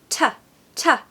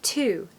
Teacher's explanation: It's more like ta. So we just sort of hint at the vowel after the T sound, but it's definitely a very strong t sound.